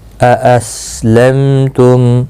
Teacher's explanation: أَأَسْلَمْتُمْ، یہاں حمزہ 2 بار آیا ہے، پہلا حمزہ تحقیق کے ساتھ پڑھا جائے گا اور دوسرے میں تھوڑا نرمی پیدا کی جائے۔ أَأَسْلَمْتُمْ، میم ساکن کے بعد تا آیا ہے، اظہار شفوی ہوگا، گناہ کے ساتھ نہیں پڑھیں گے۔